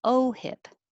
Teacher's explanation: pronounced it OHIP with a stress on O, OHIP. And it would be important to note that hip has the I, which is lower than E, like heap.